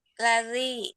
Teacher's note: Ujung lidah sedikit saja yang dikeluarkan.